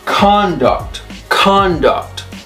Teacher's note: the stress is on the first syllable conduct now when it's a verb it's conduct see the difference conduct